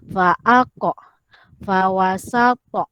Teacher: apabila kita lantunkan huruf qaf dan huruf ta ini, dia berbunyi o. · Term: huruf qalqalah